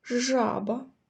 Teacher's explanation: перший звук ж і цей звук який діти твердий приголосний